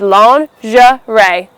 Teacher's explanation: It’s not a shh sound, it's a jh sound.